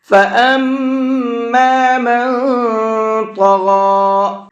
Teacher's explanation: فَأَمَّا میم کے اوپر تشدید ہے تو یہاں پر بھی غنہ کر کے پڑھیں گے. من، یہاں نون کے اندر اخفا کر کے پڑھیں گے.